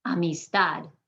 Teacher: i'm hitting that last syllable harder than the rest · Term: emphasis